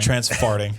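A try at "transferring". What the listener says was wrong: You put a T in the middle of that word. It's not that word.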